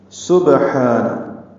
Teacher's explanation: سین صفیر کی آواز سے سیٹی کی پتلی آواز سے ادا کرنا ہے